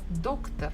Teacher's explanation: I can hear that stress falls on the first syllable, doc, доктор, doctor.